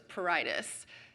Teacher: If you want to be really fancy, you can add that subtle R in the purr, but it's barely pronounced at all